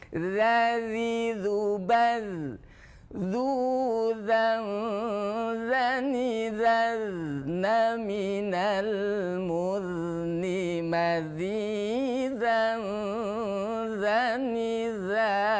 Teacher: za itu suara makhrajnya di ujung lidah menyentuh gigi seri atas. Za bukan za.